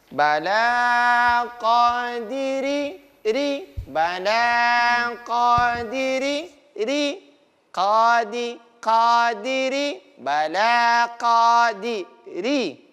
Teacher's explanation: Dia ringan diucapkan huruf ra-nya. Apalagi dia berbaris kasrah atau bunyi i. Lebih ringan lagi. Lebih tipis lagi.